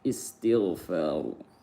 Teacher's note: Ra dibaca tebal, ru, karena berharokat dhammah